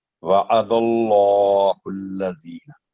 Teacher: اللہ کے نام سے پہلے دال پر فتح ہے زبر ہے تو پر کر کے پڑھا جائے گا